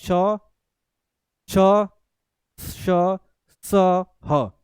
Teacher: बहुत हवा रगड़ के आ रही है, संघर्ष करते हुए बाहर निकल रही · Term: संघर्षी व्यंजन